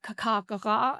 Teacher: the gutturals right at the back of our mouth